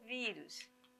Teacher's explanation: a sílaba tônica, o vi, logo nós vamos ter a paroxítona